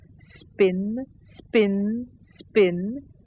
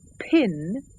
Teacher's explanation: the p sound has no puff of air. But if I say pin, there's clearly an automatic puff. · If I say spin, spin, spin, the p sound has no puff of air.